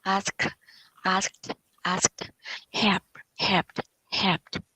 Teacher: remember d sounds like t